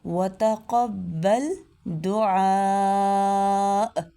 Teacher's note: ہے، وتقبل دعا، دعا نہیں ہے، دعا یہ نہیں پڑھنا بلکہ عین کو اس کے مخرج سے ادا کرنا ہے، وسط حلق سے ، وتقبل دعاء، جھٹکے کے ساتھ وقف کرنا ہے، ربی اجعلنی